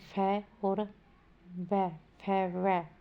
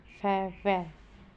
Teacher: Next है दंतोष्ठ्य व्यंजन, जैसे फै और वै, फै वै बोलकर देखना आप भी, फै वै। व्यंजन ऊपर के दांत एवं नीचे के ओठ के मिलने से उच्चारित होते हैं